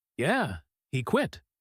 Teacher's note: confirms it with a falling voice.